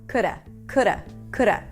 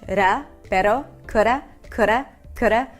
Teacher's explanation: Notice that the D is really, really light. It sounds like a flap T, like a ra, like an R in Spanish.